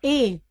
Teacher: तालू तो अ और इ को मिलकर के बनता है ए तो ए का उच्चारण स्थान हो गया कंठ तालू